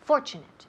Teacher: Y el énfasis en la primera sílaba.